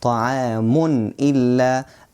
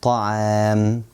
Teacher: They are pronounced as Noon Sakina, but they are just written differently. When you stop at the end of the word, you remove the sound of Noon Sakina, which is the Tanween here, and you stop with a sukoon.